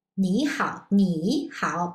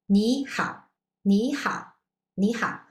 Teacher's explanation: we need to change the tone for the first character from third tone to second tone